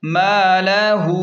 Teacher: میم الف زبر م، لام زبر ل، ہا الٹا پیش ہو، اوپر چھوٹی مد ہے، مَلَہُ، مد کی وجہ سے اسے تھوڑا زیادہ کھینچیں 3 الف کے برابر